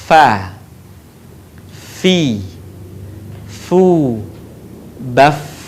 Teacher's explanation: Huruf fa keluar dengan menyentuhkan ujung dua gigi seri bagian atas dengan bibir bawah bagian dalam. Diucapkan dengan mengalirkan suara sekaligus dengan udaranya dengan lembut.